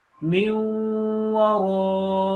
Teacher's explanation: raw long because there is a mad on that